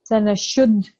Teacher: we're going to give a slight emphasis on dal because the letter is a mushaddad letter